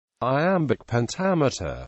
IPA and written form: aɪˈæmbɪk pɛnˈtæmᵻtər (Iambic pentameter)